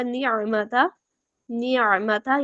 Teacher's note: کوئی بھی حرکت ہو نون اور میم پہ، تب بھی کیا ہے، ان میں غنہ کی صفت پائی جاتی ہے